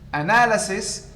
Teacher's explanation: As we have seen, analyze, first syllable. Analysis, stress shift to the second syllable.